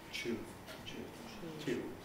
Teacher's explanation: the second element, whatever it is, semivowel or fricative, is actually voiceless because of the aspiration.